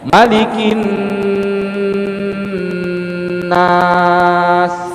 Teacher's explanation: nakinnya tetap dengung karena itu nun tasydid tadi, gunnah ya.